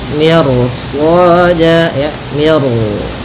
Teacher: di sini mi-nya tipis, ro-nya tebal. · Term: ro tafkhim